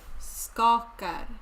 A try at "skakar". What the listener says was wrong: Yeah, the first A is long in skakar.